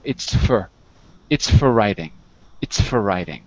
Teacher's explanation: what really is happening is that you don't say The Vow you're saying the F and the r without the O